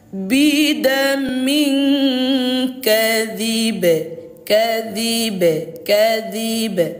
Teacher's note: karena ini qalqalah kubra, pantulannya kuat tetapi tipis.